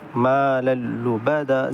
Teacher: So we will merge tanween into lam, but without gunna. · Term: idgham without gunna